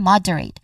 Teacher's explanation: the stress is on the first syllable mod